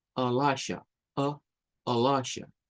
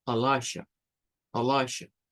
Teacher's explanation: No es con E ni con I, sino que es con un schwa